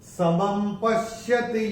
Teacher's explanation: दूसरे चरण में म के ऊपर जो ये अनुस्वार आ रहा है उसके बाद का अक्षर है प, और अनुस्वार के बाद जब प आएगा अनुस्वार का उच्चारण होगा म।